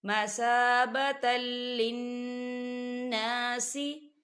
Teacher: لِلنَّاسِ، یہاں دیکھیں تنوین ہے، تا کے اوپر تنوین ہے اور تنوین کے بعد لام آ رہا ہے، تو یہاں پر ادغام ہوگا کیونکہ لام جو ہے حروف یرملون میں سے ہے، لیکن یہاں بغیر غننے کے پڑھا جائے گا